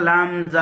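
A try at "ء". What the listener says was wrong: হামজা টান হচ্ছে কেন? হামজা টান দেবেন না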